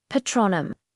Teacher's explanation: Now for patronum, the A sound is like the A in father patronum. Notice the stress is on the second syllable tro. It's given a bit more force and length.